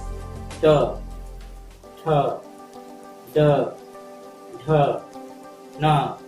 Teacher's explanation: त वर्ग जो है मूर्धा से निकलने वाली ध्वनियां हैं।